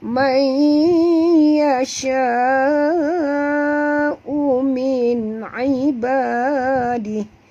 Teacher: Nun mati bertemu ya, masukkan bunyi nun ke dalam ya disertai dengung, 2 harakat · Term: idgham al-gunah